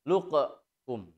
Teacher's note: qafnya dibaca dengan qalqalah, mantul. Luqkum. Nah, hanya karena qaf dengan kaf terjadi hukum idgham mutaqaribain, maka membacanya qaf lebur ke huruf kaf sehingga seolah-olah qaf itu tidak ada.